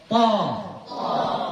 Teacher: Isti'la. Dia tinggi, meninggikan pangkal lidah kita. Atau kita sering bilangnya baca tebal, baca dengan berat.